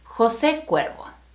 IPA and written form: xo.ˈse ˈkwɛɾ.βo (José Cuervo)